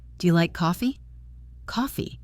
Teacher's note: Do you like coffee? Coffee. It rises.